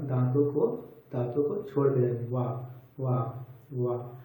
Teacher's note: जब आप लोग वा बोलिएगा तो जो आपके ओष्ठ है वह बाहर की तरफ आएंगे वा, और दांतों को छोड़ देंगे वा वा वा। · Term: दंत ओष्ठ वर्ण